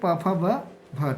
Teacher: ओष्ठ वर्ण जो ओठ से उच्चारित होते